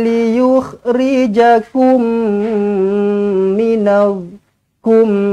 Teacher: Mim kosong bertemu dengan mim sabdu, idgham mislain, jumpa mim sabdu, terus rapatkan bibir, dengungkan dua harakat.